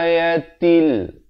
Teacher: Di sini bertemu lam. Ayatil, daripada ayatin, bila bertemu lam jadi til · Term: idgham bila gunnah